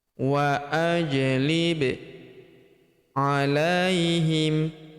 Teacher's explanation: huruf ba berharakat sukun kita pantulkan atau kita qalqalahkan